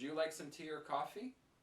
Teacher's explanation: Can you hear the or? It's very short and it's very weak.